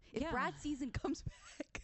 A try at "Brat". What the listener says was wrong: It also sounds like you're saying Brad. I was confused at first because I thought you said if Brad comes back. Brat. Brat. A hard T.